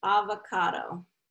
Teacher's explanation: So third syllable stress, you know, first and third, but third is going to get the primary stress.